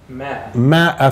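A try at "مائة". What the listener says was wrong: في المصحف، تكتب ماء ولكن لا تلفظ إلا مئة، فيش في العربية ماء، في العربية في مئة، فأنت بإمكانك تكتبها بدون ألف وبإمكانك تكتبها ألف، لكن في المصحف شو مكتوبة؟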